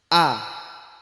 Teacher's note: Hamzah itu tempatnya atau makhrajnya itu di pangkal tenggorokan.